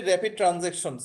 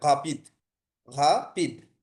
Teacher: এটা অনেকটা হচ্ছে কি যেমন হচ্ছে র র র র র র, মানে গড়গড়ের শব্দ যে একটা র হয় ওইটা হবে আর কি, ডিরেক্ট র হবে না এটা। আমরা যেমন হচ্ছে দেখেন র্যাপিড, যদি হচ্ছে ইংলিশে যদি বলি র্যাপিড ট্রানজাকশন, সো এই ক্ষেত্রে হচ্ছে আরটা খুব মানে স্মুথলি আমি হচ্ছে এখানে হচ্ছে বলতে পারতেছি হচ্ছে এক টানে হচ্ছে র্যাপিড।